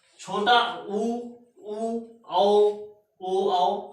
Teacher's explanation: जब ओ, औ कहेंगे तो जो मुख होगा आपका वो वृत्त के आधार पर होगा · अब वो शब्द जब आप बोले तो मुंह जो आपका वृत्त वृत्त समझते हैं, गोल हो जाए, ठीक है। तो ऐसे शब्दों को बोलने में आपका जो मुख है वो वृत्त की तरह गोल हो जाता है, तो उसे हम क्या कहते हैं, वृत्तमुखी कहते हैं।